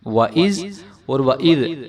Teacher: ذال کو ہم ذال ہی پڑھیں گے نرمی کے ساتھ، اس کو ہم زا نہیں پڑھیں گے